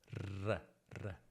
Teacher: È un suono alveolare, quindi la punta della lingua tocca gli alveoli come N e L. Sì, quindi la R si pronuncia con la lingua nella stessa posizione di N e L. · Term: suono vibrante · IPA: /r/